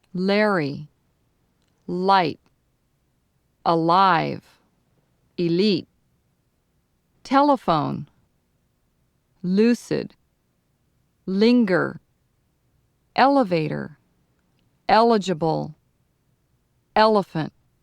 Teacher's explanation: in the first L your tongue touches between your Upper Front Teeth and the bump behind them